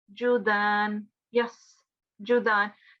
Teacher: make sure that it's not a sh sound, it's not sheen, it's seen